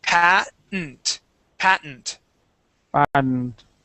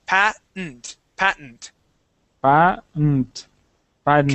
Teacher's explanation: there isn't going to be a D there. Okay, we're going to go straight to an N. So we have pa and then n, patent, patent. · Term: silent T